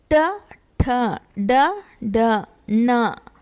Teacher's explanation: ಮೂರ್ಧ ಭಾಗದಲ್ಲಿ ಅಂದರೆ ನಾಲಿಗೆ ಹಿಂದೆ ಚಾಚಿ ಬಾಯಿಯ ಮೇಲ್ಭಾಗವನ್ನು ಸ್ಪರ್ಶಿಸಿದಾಗ ಉಚ್ಚರಗೊಳ್ಳುವ ಅಕ್ಷರಗಳೇ ಮೂರ್ಧನ್ಯ ಅಕ್ಷರಗಳು